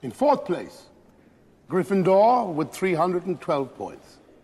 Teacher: he's subtly rolling his RS making them more noticeable than an RP accent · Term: rolled RS